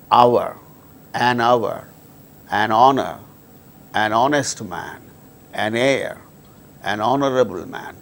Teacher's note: In all these cases, these words begin with H, which is a consonant letter, but H becomes silent and these words produce initially vowel sound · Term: silent H